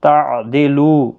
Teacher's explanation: لو واو مدہ ہے، 1 الف کی مقدار کے برابر کھینچ کر پڑھیں گے۔